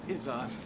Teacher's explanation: It's not the second syllable stress, it's the first syllable stress.